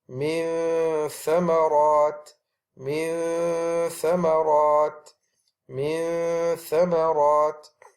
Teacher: the tha is pronounced by taking the tip of the tongue and placing that at the tip of the front incisors, the upper incisors. So where is the noon makhraj? · we can still make the noon sound from the place of the tha. So I am going to put my tip of my incisors to the tip of my teeth, and you are still going to hear the noon sound with a hiding.